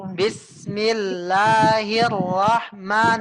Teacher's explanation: madnya panjangnya Bu panjangnya jangan melebihi dua